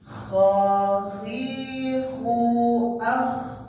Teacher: Harus lepas anginnya Pak. Enggak boleh ditahan. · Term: Kerongkongan atas